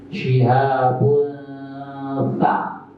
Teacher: Ketika baca bun itu posisi lidah sudah siap-siap ke sa. Syihabun ta, namanya menyamarkan.